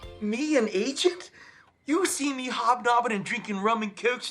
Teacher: It has a particular feature called fronting back vowels, which involves bringing your tongue forward instead of back.